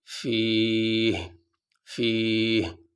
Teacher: ہا تو پڑھ رہے ہیں لیکن ہا کے نیچے جو زیر ہے وہ نہیں پڑھا جا رہا · وقف کرنے کی صورت میں جو ہا کے نیچے زیر ہے یہ نہیں پڑھا جائے گا، آخری حرف تو پڑھا جاتا ہے لیکن آخری حرف کی جو حرکت ہے وہ نہیں پڑھی جاتی۔